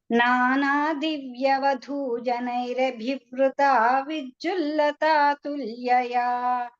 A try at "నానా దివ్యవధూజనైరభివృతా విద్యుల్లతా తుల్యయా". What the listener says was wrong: అభివృత దగ్గర ఇంకా ఏమిటో పేస్ సడన్ గా వేగం పెరిగిపోతుంది, ఎందుకో తెలియదు. మళ్ళీ ఒకటే పేసులో చెప్పండి.